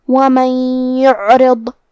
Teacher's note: کلمت یعرض میں یہاں حرف العین ہے اور اس پہ جزم ہے لہذا ہمیں عین کو ظاہر کرنا ہے